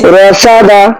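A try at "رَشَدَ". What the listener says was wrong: সিনে একটু এই যে সিনটা একটু ই হয়ে যায় একটু খেয়াল রাখবো সিনের সময়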